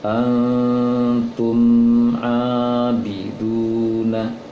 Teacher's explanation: ada mim sukun bertemu dengan a, berarti mim sukunnya tidak dengung. Wala antum abiduna, antum abiduna, berarti tumnya tidak boleh didengungkan.